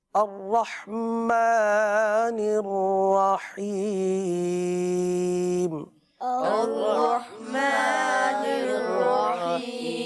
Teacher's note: رحیم وقف میں 3 الف تک اس کو کھینچ کر پڑھیں گے